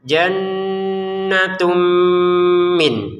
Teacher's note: Tanwinnya dimasukkan ke mim disertai dengungan.